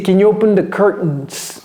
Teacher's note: J'ai avalé le T.